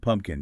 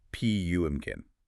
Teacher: we almost never pronounce that second P sound clearly. We say it really fast. · the second P is almost silent. It just gets absorbed.